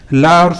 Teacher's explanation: ला और सा जब आप बोलते हैं तो आपकी जीभ थोड़ी सी दांतों से टकराती है, तो इस वजह से वहाँ पर आपका दंत हो जाता है।